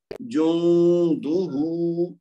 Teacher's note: नून साकिन का इख्फा किया, गुन्ना करके दो हरकत तक आवाज को छुपाया, उसके बाद दाल को पेश है तो सिर्फ एक हरकत देंगे, और हा के ऊपर उल्टा पेश है तो उसका वाव मद की तरह दो हरकत तक खींच के पढ़ेंगे।